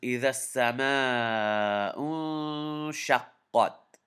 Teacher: Noon sukun, especially when written in the red in the Qaida Noorania, you have to hold the noon in your nose a little bit. You have to do ghunna on it.